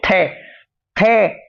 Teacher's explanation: आपकी जीभ का अगला हिस्सा दांत पर लग रहा है, इसलिए आपका ये दंत्य होगा। ऐसी दे बोलकर देखो, दे दांत पे लग रही है जीभ, इसलिए दंत्य होगा।